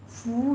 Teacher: فو میں واو مدہ ہے، دونوں ہونٹوں کو گول کر لیجیے